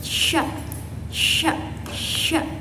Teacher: Huruf sya itu keluar dari tengah lidah, tetapi udara mengalir dari sela-sela gigi.